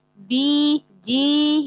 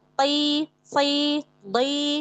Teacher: Huruf to itu isti'la juga itbaq. Ketika dia kasroh, tetap jaga ketebalannya. Tetap jaga itbaqnya. Gitu ya. Karena huruf-huruf yang 4, yang isti'la itbaq, ketika kasroh itu berbeda dengan yang isti'la infitah.